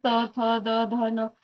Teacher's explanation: याचा उच्चार हा दंताच्या माध्यमातून होतो